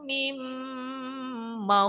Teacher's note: Min ketemu ma, mim n-nya hilang, langsung mim. Dua ketukan. Mim, dua ketukan baru ma, mad wajib muttasil.